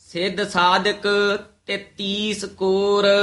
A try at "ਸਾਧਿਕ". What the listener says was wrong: ਸਾਧਕ ਦੇ ਧਦੇ ਦੀ ਸਿਹਾਰੀ ਲਾ ਕੇ ਬੋਲਣਾ ਹੈ।